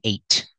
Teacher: you don't have to release the t